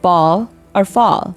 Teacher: short a as in the American pronunciation of ball or fall it's a rounded sound to make the sound round your lips lightly and let the sound come from the back of your mouth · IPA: /ɒ/